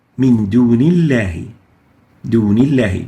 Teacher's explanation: The lam here, the lam of lafz al-jalala, of the word Allah, is following a noon with kasra, so it is attenuated.